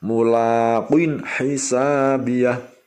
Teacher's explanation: Bunyi qaf kasroki sama kaf kasroki harus bisa membedakan karena qaf adalah huruf isti'la. Makanya mulaqin mau membunyikan qin mencucu dulu karena itu huruf isti'la.